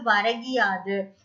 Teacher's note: ஒரு மாத்திரை அளவுல குறுகி ஒலிக்கக்கூடிய இகரம் வந்து குற்றியலிகரம் அப்படின்னு சொல்லப்படுது